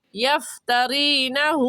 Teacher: را کو باریک پڑھیں گے کیونکہ را کے نیچے زیر ہے، اور ہو الٹا پیش ہے اور الٹا پیش کو ایک الف کی مقدار کھینچتے ہیں، کھینچ کر پڑھیں گے.